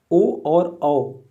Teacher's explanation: ओ और औ, ओठ और कंठ दोनों के संपर्क से ये ध्वनि निकल रही है। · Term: कंठोष्ठ